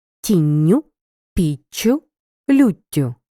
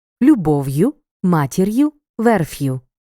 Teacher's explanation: в орудному відмінку однини іменники третьої відміни мають закінчення ю але якщо основа закінчується одним приголосним крім губного та р то в орудному відмінку він подовжується